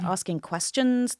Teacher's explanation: That would be up-talk with this rising intonation at the end of the phrase.